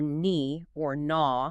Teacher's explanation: The English mouth simply dropped the first consonant.